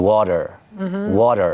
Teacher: So sometimes when we speak the T surfaces as something else. So for some people it surfaces as what linguists call a flap. So that's what the Americans give us in water. Water. >> Sounds like a D.